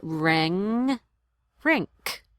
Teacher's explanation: You hang on to the sound a little longer when you say ring.